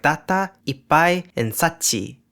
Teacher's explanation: They're called geminated consonants, or doubled consonants, whichever terminology you prefer. Voiceless obstruents ka, sa, ta, and pa can all be geminated, in words like data, ippai, and sachi.